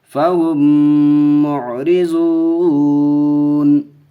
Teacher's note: را کے نیچے زیر ہے، را کے اوپر زبر پیش ہو تو پر ہوتی ہیں، زیر ہو تو باریک پڑھتے ہیں، تو باریک پڑھیں گے. واو ساکن سے پہلے پیش ہے، واو مدہ کا قاعدہ ایک الف کھینچ کے پڑھیں گے